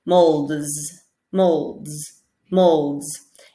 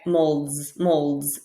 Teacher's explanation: in this case the s actually sounds like a z